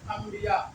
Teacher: लिखा तो रहेगा अन लेकिन पढ़ेंगे हम लोग अम यानी ई पढ़ेंगे अंबिया इसी तरीके से आगे है कुंबा आप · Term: नून मकलू